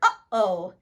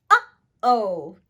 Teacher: A glottal stop is the sound that we make when we say the word uh-oh. As you can hear, my voice catches in the air, stops, and then continues.